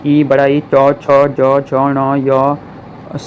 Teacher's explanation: हमेशा याद रखना है ई बड़ा ई चौ छ जौ झौ ण य सौ से सलजम वाला सौ तालव्य व्यंजन है। इनका उच्चारण तालु और जीभ के स्पर्श से होता है।